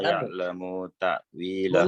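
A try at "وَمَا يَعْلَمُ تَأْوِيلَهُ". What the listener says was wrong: Bunya jangan dibaca panjang. Mu.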